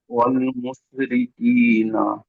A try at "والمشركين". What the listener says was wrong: জি একটু বড় সিনটা পড়বেন। মুস মুস ছোট সিন, মুস ফোঁস বলি যে বড় সিন।